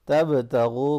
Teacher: तबतगू, बाप क़लक़ला होगा, गैन को मोटा पढ़ेंगे और वो मद्दा है